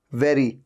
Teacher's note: ऊपर के दांत नीचे वाले लिप पे टच होते हैं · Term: वी साउंड